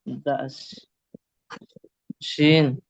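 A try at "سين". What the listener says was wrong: আগে শিন না, আগে সিন।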